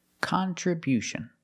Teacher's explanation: We change the stress to the first and third syllable.